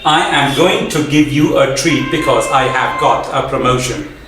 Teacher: he's stressing on every single word here because he's not aware that english is a stress time language not a syllable time language